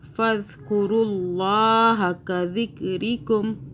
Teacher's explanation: ذال کو سافٹ پڑھنا ہے، میم مشدد پہ 2 سیکنڈ کا غنہ کیا، قاف کو موٹا پڑھا